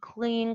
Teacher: devoiced under the presence of this concern sounds the same for the lateral being preceded by the velar voiceless plosive